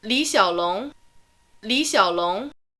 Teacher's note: but the third tone in li will still change to a second tone